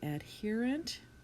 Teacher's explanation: I would want them to note that they're using E, the long sound, in adherent, even though it's an ER